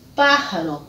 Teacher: com a sílaba tônica na antepenúltima sílaba